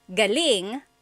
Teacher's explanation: So if the emphasis is on the second syllable, galing that means good or great or excellent.